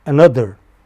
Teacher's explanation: Middle syllable is stressed.